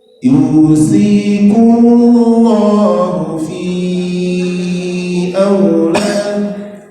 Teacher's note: lafzul jalalah didahului baris depan itu dibaca tebal